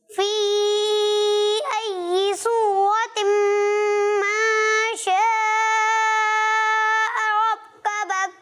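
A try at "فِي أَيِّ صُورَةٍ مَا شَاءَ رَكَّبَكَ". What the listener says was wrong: رکبک، ماشاء، حمزہ واضح کریں، ایک مرتبہ پھر کوشش کریں.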